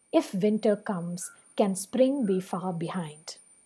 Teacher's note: Unstressed, stressed, unstressed, stressed. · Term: iambic meter